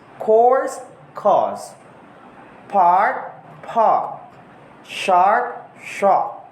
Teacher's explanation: the R is sometimes replaced by a vowel sound. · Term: British English